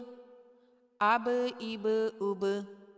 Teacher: حروف قلقلہ 5 ہیں: قاف، طا، با، جیم اور دال۔ جب یہ ساکن ہوتے ہیں تو ان کی آواز مخرج میں رکتی نہیں بلکہ پلٹ کر واپس آتی ہے